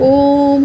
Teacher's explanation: ओम हम जब बोलते हैं तो उसमें काफ़ी लंबा खींचते हैं ओम करके। ठीक है, तो ये हमारा प्लुप्त स्वर होता है।